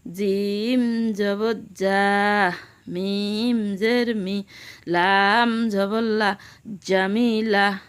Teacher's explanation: জিম জিহ্বার মাঝখান থেকে শক্তভাবে আদায় হবে,